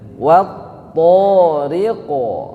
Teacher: Jadi cukup 2 harokat, tidak boleh kurang, tidak boleh lebih. Kemudian diakhiri dengan huruf qaf yang disukunkan, maka ada qalqalah, ada pantulan.